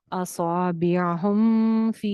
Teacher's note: यहाँ पे कोई गुन्ना नहीं हो रहा है, क्योंकि मीम के बाद ना तो बा है ना ही मीम है, तो यहाँ पे इजहार करेंगे हम।